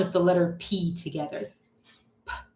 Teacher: it's real easy to see that it's a stop sound. We just make it with a burst of air.